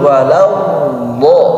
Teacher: Istitalah ini diartikan secara bahasa memanjang, yang menurut istilah bahasanya memanjang suara dari awal pinggir lidah sampai akhirnya, ya, sampai dodnya itu dibaca sempurna, walau do. Jadi jangan langsung walau do, tahan dulu, walau do. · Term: al-istitalah